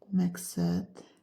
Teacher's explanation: Məqsəd sözündə söz sonundakı d, t kimi tələffüz olunur. Bir də söz ortasında gələn q samiti özündən sonra kar samit gəldiyinə görə k kimi tələffüz olunur